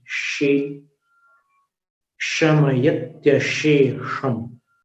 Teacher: दो श का उच्चारण तालव्य है, जीभ को नीचे वाले दांत के पीछे करके